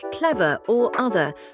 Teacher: pronounce the final -er in words like clever or other, replacing it with a schwa sound